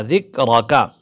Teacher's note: ذال باریک ہے، کاف باریک ہے، را کو ہم موٹا کر کے پڑھیں گے، ذکرک پر کاف پر وقف کریں گے۔